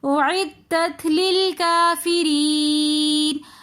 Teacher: یا ساکن اس سے پہلے زیر تو یا مدہ ہونے کی وجہ سے ہم کافری تھوڑا سا کھینچ کر پڑھیں گے۔ یا مدہ کے بعد پھر آگے نون ساکن آ رہا ہے تو ہم اس کو پھر وقف کی حالت میں تھوڑا لمبا کر کے پڑھیں گے